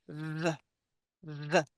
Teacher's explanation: When we add our voice, we get a V.